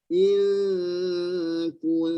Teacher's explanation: Kita meletakkan pangkal lidah ke rumah kaf. Ing kita angkat.